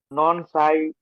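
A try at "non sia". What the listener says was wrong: নন সাই না, এটা সিয়া বলছি, একটু আগে মাত্র ভেঙে ভেঙে উচ্চারণ করার কথা বলছি। এসে, এই যে দেখুন, এসে ই, সি, পরে এটা হচ্ছে আ, তাহলে কি হলো? সি আ, নন সিয়া।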